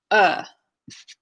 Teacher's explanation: the tongue isn't high the tongue isn't low the jaw isn't up the jaws and down is just kind of a neutral kind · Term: schwa sound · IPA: /ə/